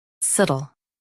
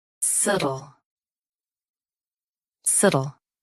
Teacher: Say suh softly. Then almost drop the tuh.